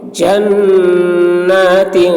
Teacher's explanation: نون مشدد غنہ اور تین میں اخفا